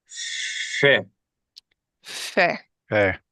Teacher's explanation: An F sound produced using both lips without contacting your teeth.